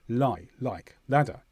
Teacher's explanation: You put your tongue on the gums behind your teeth at the top. Let some air through and then release. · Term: stronger version